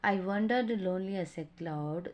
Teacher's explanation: Then meter of the poem, iambic tetrameter, a line of the poetry with 4 beats of one unstressed syllable followed by one stressed syllable